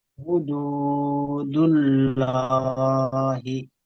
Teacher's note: আল্লাহর পূর্বে পেশ এসেছে, এটি আল্লাহর শব্দকে পুর করে, আল্লাহর শব্দকে পুর করে পড়তে হবে। হ্যাঁ, আল্লাহ শব্দের হুদুল, লামকে পুর করে অর্থাৎ ল করে পড়তে আল্লাহ হবে।